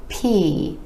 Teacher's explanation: it's made with a tiny puff of air being released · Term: air puff sounds